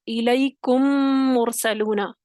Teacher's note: اب پہلے میم کو دوسرے میم میں داخل کر دیں گے، یعنی پہلا میم مدغم ہے اور دوسرا میم مدغم فی ہے، تو اس کو آپس میں داخل کریں گے تو پھر یہ دونوں مشدد کی یعنی ایک ساتھ پڑھے جائیں گے مشدد حالت میں، اور ان پر غنہ ہو جائے گا. الیکم مرسلون ادغام ہے.